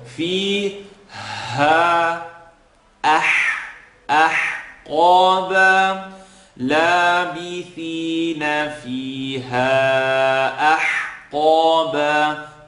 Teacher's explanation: Now we have the ha that we're stretching for a minimum here of 3, and we have alif, then ha, second part of the throat